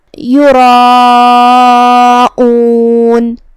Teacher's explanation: مد واجب متصل کا معنی ہے کہ حرف المد اور اس کی وجہ جو کہ حمزہ ہے دونوں ایک ہی کلمہ میں ہو، جو کہ یہ مد سے پہلے حرف تفخیم ہے، مطلب را کا جو کہ حکم ہے تفخیم، تو ہم یہ مد کو بھی تفخیم سے ادا کریں گے، کیونکہ مد الف اپنے پیچھے والے حرف کا حکم لیتا ہے، تفخیم ہو یا ترقیق۔